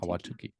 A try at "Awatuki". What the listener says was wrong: Awatuki. It's just you don't have to overpronounce any of the syllables.